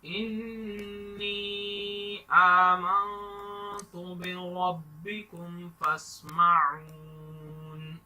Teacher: را کو موٹا پڑھنا ہے، انی پر غنہ کریں گے